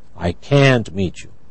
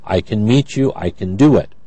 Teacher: Can is unstressed, so the vowel is reduced.